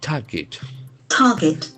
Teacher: Here we can observe that the middle R is silent.